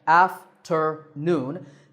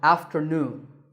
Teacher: three syllables again after noon this time the third syllable is stressed